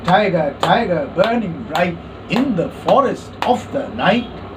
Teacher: the trochaic meter we have two syllables in it fruit and of the two syllables the first one is stressed and the second is unstressed